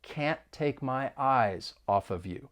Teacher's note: of air can't the other thing that is happening is that more linking will occur we can link the phrase eyes off